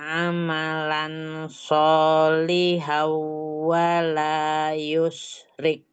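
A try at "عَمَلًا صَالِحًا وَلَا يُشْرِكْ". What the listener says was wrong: Tuh fathah tanwin ketemu dengan sodnya ikhfa ya. Dia gunakan amalan solihau. Tadi kebacanya izhar. Disertai dengan ghunnah.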